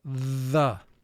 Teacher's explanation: the second sound for th is called the voiced sound for th because in order to make the sound you vibrate your vocal chords